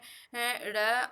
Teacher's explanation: जिसके उच्चारण में जीभ की नोक झटके से तालु को छूकर वापस आ जाती है, उसे उच्छिप्त व्यंजन कहते हैं।